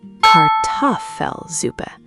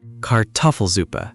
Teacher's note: The stress is on the toff.